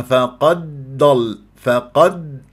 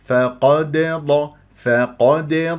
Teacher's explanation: دال مقلقله قلقله صوره في وسط الكلام لانها مربوطه بكلمه ضل